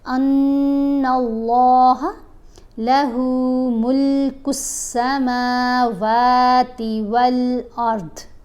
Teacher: نون کے اوپر غنہ کریں گے، لام سے ملائیں گے، لام کو موٹا بھی پڑھیں گے اور لمبا بھی ایک الف جتنا کریں گے کیونکہ اوپر کھڑا زبر ہے۔